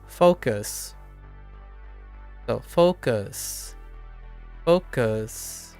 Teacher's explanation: there's a slight up because there's kind of a slight uptone at the end for all of them